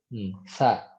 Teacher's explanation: makrojnya adalah ujung lidah bertemu dengan ujung gigi seri atas